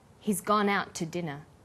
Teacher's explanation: in out is held slightly longer he's gone out to dinner the TT sound is pronounced only once · The t sound is pronounced only once.